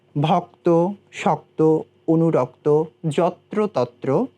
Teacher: প্রথমে যুক্তবর্ণ থাকছে এবং শেষে গিয়ে সেটি ওকারান্ত উচ্চারিত হচ্ছে